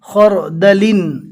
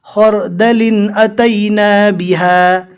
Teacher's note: خو اور رو کو پور پڑھتے ہوئے دال پور نہ پڑھ لے